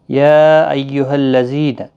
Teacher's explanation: یا یہاں پر چھوٹی مد ہے، مد منفصل 3 الف کی مقدار کے برابر کھینچ کر پڑھیں گے